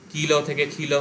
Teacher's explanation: কিল থেকে খিল হচ্ছে মহাপ্রাণী ভবন। ক ছিল অল্পপ্রাণ, খ হলো মহাপ্রাণ হয়ে গেল।